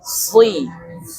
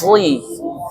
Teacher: ketika harokatnya berharokat kasrah, kadar ketebalan berkurang. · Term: shad